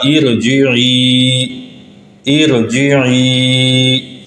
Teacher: عارضی زیر کے بعد را ساکن ہو تو اس کو پر پڑھا جائے گا